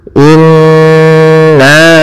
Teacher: kita tahan dulu suara n-nya 2 harokat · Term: gunnah